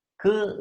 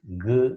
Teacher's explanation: curl is a voiceless consonant goo is a voiced consonant